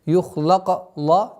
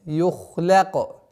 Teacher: Ха твердый звук, лям мягкий. И поэтому после твердого звука ха, лям должно произноситься мягче.